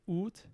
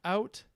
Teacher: After the great vowel shift, we get these long oos going to ow in modern English.